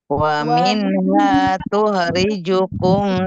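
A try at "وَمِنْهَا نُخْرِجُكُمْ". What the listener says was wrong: Nu, huruf nun ya. Wa minha nu. Yang tidak panjang dibaca panjang, yang panjang dibaca pendek. Wa minha panjang, kemudian nukhrijukum taratan ukhra.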